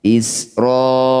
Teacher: Mad wajib ini panjangnya 6 harokat.